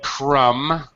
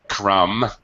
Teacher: We do not pronounce the B. The B is completely silent.